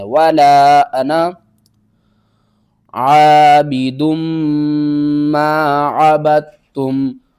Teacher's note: ٹھیک ہے نا، یہ پڑھا جائے گا انا، ٹھیک ہے، اور انا کے بعد نون کے بعد جو الف ہے نا اس کو آپ نے چھوڑ دینا ہے